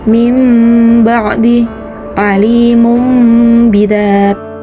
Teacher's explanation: Disebut hukum bacaan iqlab apabila ada nun sukun atau tanwin bertemu dengan huruf ba. Cara membacanya merubah ba menjadi mim dengan berdengung.